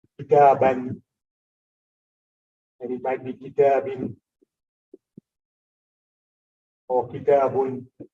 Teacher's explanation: the double fatha, double dhamma, double kasra, is basically the sound of a noon. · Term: tanween